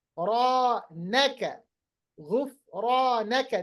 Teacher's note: را بھی پر، الف بھی پر، مگر فا پر نہیں پڑھا جائے گا، اسی لیے غفرانک، غفرانک۔